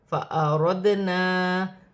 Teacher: دال ساکن ہے، اپنے سے پہلے حرف کی حرکت کے ساتھ ملا کر پڑھا جائے گا اور حروف قلقلہ میں سے ہے، قلقلہ کے ساتھ پڑھا جائے گا. الف مدہ بھی بن رہا ہے اور چھوٹی مد بھی ہے، مد منفصل، 4 الف کی مقدار تک کھینچ کر پڑھا جائے گا.